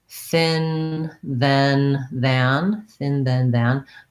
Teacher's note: having that interdental position between the tongue between the teeth so that it can get that fricative sound this sound but because i'm getting ready for the next vowel